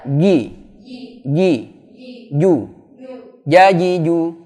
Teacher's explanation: jim itu sifatnya jahar ya, tidak ada boleh nafas berembus